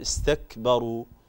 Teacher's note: هذه الكاف لا بد من إظهار الهمس فيها